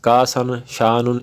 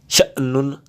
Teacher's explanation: حمزہ ساکن کو جھٹکا دے کے پڑھنا ہے تو وہ چیز ہے، شأنن، کأسن اس طرح سے، کاسن، شانن اس طرح نہیں، شأنن جھٹکا دے کے، ٹھیک ہے۔